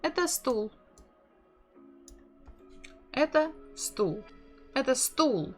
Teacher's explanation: So we can hear that intonation goes down.